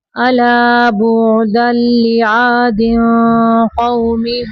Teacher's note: اخفا کا قاعدہ کرتے ہوئے آواز کو تھوڑا پر رکھیں گے